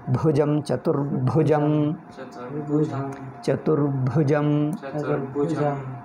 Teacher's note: ಭು ಅವರದು ಹೇಳ್ತಾ ಇದ್ದೀನಿ ಭೂ ಬರುತ್ತೆ ಭುಜಂ ಭುಜಂ ಜಾನು ಹೆಚ್ಚು ಮಾಡಬೇಡ ಜಾಕೆ ಉಸಿರು ಹೆಚ್ಚು ಬರಬೇಡ ಜಂ ಸಾಮಾನ್ಯ ಇರಬೇಕು